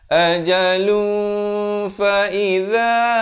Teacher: Kalau nak sambung dia jadi ikhfa di sini. Dia jadi hukum ikhfa hakiki, dibacakan dengan samar 2 harakat.